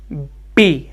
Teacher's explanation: पी lips contact होते हैं, तो एयर स्टॉप होता है, ऑब्स्ट्रक्ट होता है